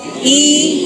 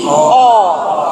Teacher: when you say E, you can feel that it is in the front. Now, when you say O, you can feel it is moving back. But that is because you're stopping at E, stopping at O.